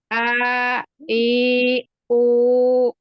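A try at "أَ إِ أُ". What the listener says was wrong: masih ada Hamzahnya.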